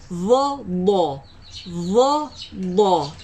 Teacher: Dha dia tak keluarkan hujung lidah.